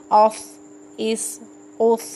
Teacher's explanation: صاد موٹے حروف میں سے ہے اور سیٹی والے حروف میں سے ہے